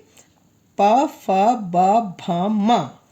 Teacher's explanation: पवर्ण व्यंजन अस्ति, पवर्ण कौन से होते हैं? जो होठ से बोले जाते हैं। जैसे प, फ, ब, भ, म हो गया ना।